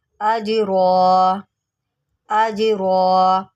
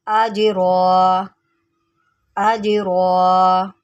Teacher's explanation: جیم حروف قلقلہ میں سے ہے تو یہاں پر آپ اس کو ہلا کر پڑھیں گے